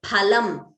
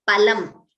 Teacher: phalam, pha, mahaprana, means fruit, whereas palam, alpaprana, means meat. Now, I already told you, pha, please note the pronunciation, it is phalam, it is not phalam.